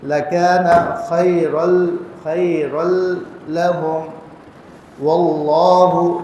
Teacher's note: اللہ کے لام کو موٹا کر کے پڑھیں گے